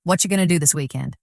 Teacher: Did you hear how what are you going to was compressed into what you gonna? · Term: connected speech